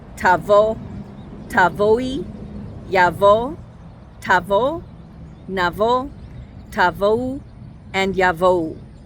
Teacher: the vav sounds like an o instead of like an oo